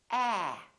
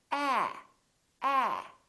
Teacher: after me ah so your lips are open and your tongue is down and your tongue is tense